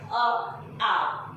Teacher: जो ये अ आ है वो तो बिल्कुल कंठ से बोला जा रहा है, बोल के भी देखोगे अ आ, ठीक है।